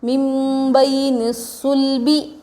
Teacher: نون ساکن کے بعد با آ رہا ہے نون کو میم سے بدل کر غنہ اور اخفا کے ساتھ پڑھیں گے